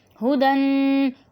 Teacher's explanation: یہ ہا پیش ہو کو اتنا کھینچ کے پڑھتے ہیں، ہودن کر کے پڑھتے ہیں، تو یہ غلط ہے، ٹھیک ہے. اس کو ہمیں جلدی سے پڑھنا ہے.